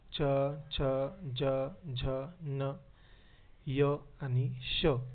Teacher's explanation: ज्या वर्णांचा उच्चार करताना जिभेचा जो स्पर्श असतो तो टाळूला म्हणजे दाताच्या मागील जो वरचा भाग असतो त्याला होतो त्या वर्णाना तालव्य वर्ण असे म्हणतात